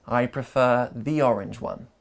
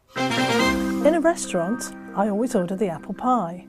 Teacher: you might also hear a small linking ya in between